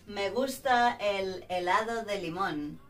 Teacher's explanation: La letra H es shh, muda, no se pronuncia.